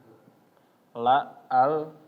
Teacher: Kalau misalnya lam, suaranya ya la, al, dia suaranya ke samping. Sedangkan ro ya, dia tetap lurus ke bagian depan lidah ya, ke bagian depan lidah di sini. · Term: sifat al-inhiraf